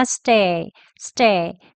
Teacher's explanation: 그리고 stay의 e라는 발음은요, stay란 발음 입 모양 그대로에서요, e를 약하게 이어서 발음합니다.